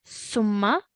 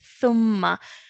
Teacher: we take the tip of our tongue and touch it to our top 2 teeth